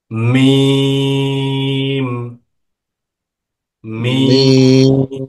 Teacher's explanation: দুই ঠোঁটের শুকনো জায়গা হইতে মিম উচ্চারিত হয়